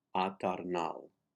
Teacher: The accent is on nal, eternal.